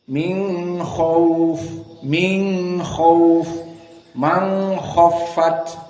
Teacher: nun sakinah bertemu dengan k tidak dibaca izhar alhalqi seperti qiraah hafz an asim tetapi dibaca dalam keadaan ikhfa nunnya diikhfakan disembunyikan